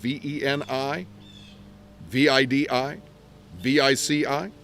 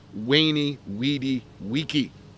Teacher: in this pronunciation words beginning with a V sound like a w